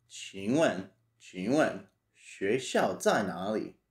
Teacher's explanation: So this is third tone, fourth tone, second tone, fourth tone, fourth tone, third tone.